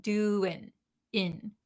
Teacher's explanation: The ing has that kind of nasly sounding. But when we're talking very quickly, we skip the nasal sound and we just say doing in.